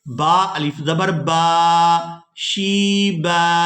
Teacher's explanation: وقف کر دیں گے تو با کو ایک الف مقدار کھینچ کر ادا کریں گے